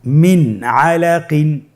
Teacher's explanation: যখনই আমরা কোরআন কারীমে নুন সাকিন তানবিনের পরে এই 6টি হরফকে দেখব, আমরা নুন সাকিন তানবিনকে স্পষ্ট করে গুন্না ছাড়া পড়ব। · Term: ইজহার